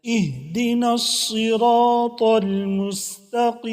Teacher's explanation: موٹا کر کے پڑھنا ہے، صاد اور سین میں فرق ہے، سین کو باریک پڑھنا ہے سین سیٹی کے ساتھ، اور صاد کو موٹا کر کے پڑھنا ہے